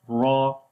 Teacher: And ra has fatha, we read heavy sound, ra. And then ha we connect with the ya.